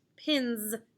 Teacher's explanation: like bowling pins look at the letter right before the s the letter n is voiced so this s will make the z sound